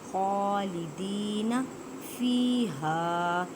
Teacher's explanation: اب دیکھیں ان سے پہلے زیر ہے تو یہ مدہ کا قاعدہ کریں گے، اس کے ایک الف کی مقدار میں کھینچ کر پڑھیں